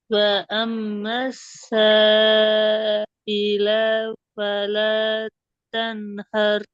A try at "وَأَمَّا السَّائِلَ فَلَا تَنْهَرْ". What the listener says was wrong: இல லாம் நீட்டப்படாது. இல இந்த லாம் என்ன செய்யக்கூடாது? நீட்டப்படாது.